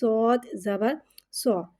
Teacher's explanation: صوت حرف مستعلیہ ہے، اس کی آواز الگ سے موٹی ادا ہوئے گی اور صوت میں سیٹی کو ظاہر کریں گے اور دال میں کلکلوں کو ظاہر کر کے پڑھیں گے۔